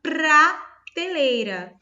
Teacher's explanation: eu tenho P e o R sonorizado aqui, pra, até treme